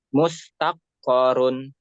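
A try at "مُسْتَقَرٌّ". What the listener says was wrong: Yang mana yang tasdid? Yang terakhir aja ya yang ditasdidkan. Mustaqarrun gitu ya.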